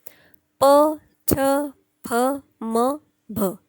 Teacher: यांचं सगळ्यांचं उच्चारण स्थान ओष्ठ आहे पण छचं उच्चारण स्थान ओष्ठ नाही आहे म्हणून हा छ ऑड मॅन झाला.